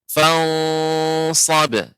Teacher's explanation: huruf sad itu huruf isti'la. Jadi tebal.